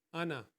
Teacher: لیکن یاد رکھیں قرآن پاک میں جہاں بھی انا اس کا معنی ہوتی ہے میں، اس کا معنی ہے میں یعنی کہ میں، اور یہ جہاں بھی آئے گا تو ہم اس کا جو الف ہے اس کو ہم سائلنٹ کرتے ہیں، اس کو ادا نہیں کرتے ہیں، پڑھتے ہیں ہم انا، اس کو ساکت کر دیتے ہیں۔